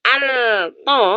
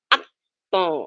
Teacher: Idgham lamnya dimasukkan ke th maka tidak dibaca Al th tapi at th masuk ke th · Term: Idgham Syamsiah, idgham syamsiyah